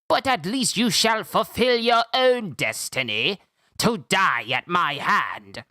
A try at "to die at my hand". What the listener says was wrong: There's more emphasis on the H when he says hand. It's not just hand, it says